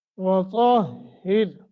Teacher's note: طا کو موٹا ہا سینے کی طرف سے را باریک